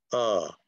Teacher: Like this sound right here, the symbol is called the schwa, but the sound is okay? So it's an upper mid central lax vowel.